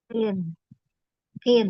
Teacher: qaf itu tidak masuk ke tenggorokan, tidak juga terlalu depan di huruf kaf ya. Tidak kin, tidak poin.